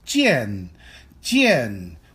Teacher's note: a 3rd tone character which means that it is a falling tone and rising tone